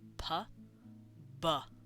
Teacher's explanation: it's essentially the same sound same place of articulation it's just one is soft and uh unvoiced while the other is voiced